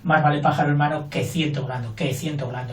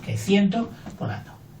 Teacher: es un que va a ser una conjunción, que ya la veremos, no lleva acento y fíjate que tampoco suena mucho en la frase